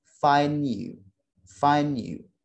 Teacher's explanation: maka suara d pada kata find ini bisa kita drop suaranya. Sehingga menjadi find you.